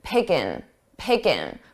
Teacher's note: So I dropped that ing, I dropped that G sound from the ing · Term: drops the G